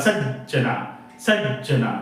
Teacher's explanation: चा जो भार आहे तो त्या स वर पडतो बघा सज्जना सज्जना म्हणून स वर भार पडतो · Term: गुरु